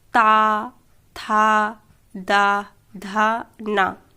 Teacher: और जैसे अब दंत वाले बोलेंगे ऊपरी, दांतों के निकट से